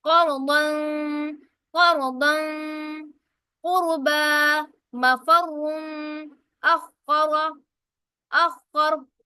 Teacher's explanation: را ساکن آ گئی، را سے پہلے حرف پر زبر آ رہی ہے، اسی کیا کریں گے، موٹا پڑیں گے، کیونکہ وہ را جس کے اوپر زبر ہو وہ موٹی پڑی جاتی ہے۔ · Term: را کو موٹا پڑھا